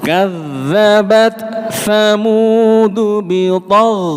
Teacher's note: Ghain lagi-lagi jangan mantul.